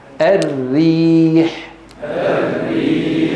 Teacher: الوراء الراء المفخمه هنا اللسان متقعر وهناك تضيق وين في الحلق بينما الراء المرققه ليس هناك تقعر باللسان وليس هناك تضيق في الحلق